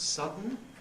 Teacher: schwa and n may make syllabic n, so that sudden becomes sudden.